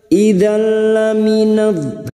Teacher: Idzal fathah tanwin bertemu lam, nun sukun atau tanwin yang bertemu dengan huruf lam dan ro. Namanya bacaan idgham bila guna, hanya masuk tanpa mendengung, tanpa ditahan lama-lama.